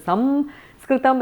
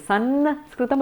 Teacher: Okay, so there is a challenge even around the anuswara in the word Sanskritam, that how do you pronounce it? In the south it is Samskritam, in the north it is Sanskritam, a dental one. In Maharashtra and all is Sanskritam, it's somewhere in between different anunasikas.